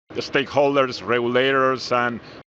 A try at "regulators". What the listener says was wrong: Again with the syllable stress. Stakeholders, regulators. Regulators also has the emphasis on the first syllable, and then there's that Y sound in the middle. Regulators.